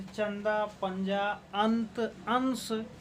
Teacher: अनुस्वार के अंतर्गत इसका उच्चारण स्थान नाक होता है।